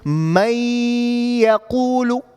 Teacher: But because the ya is part of the letters of idgham, so you assimilate, you go past the noon, you go directly into it.